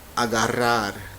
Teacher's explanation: the double R, which is a rolled R